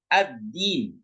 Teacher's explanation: dalnya ditekan, berarti di situ ada huruf yang digabungkan.